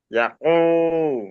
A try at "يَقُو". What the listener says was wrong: ইয়াটা টান হবে না, ইয়াকু, ইয়াকু।